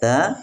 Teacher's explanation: ujung lidah menempel pada pangkal gigi seri atas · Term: huruf ta